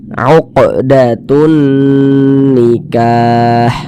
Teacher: Huruf qaf termasuk salah satu huruf qalqalah, maka ini termasuk kepada qalqalah. Nah, kita pantulkan bacanya ini termasuk kepada qalqalah sughra, qalqalah kecil karena dia berada di tengah bacaan.